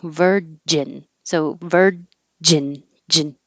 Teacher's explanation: But this one, you stop the airflow with the J.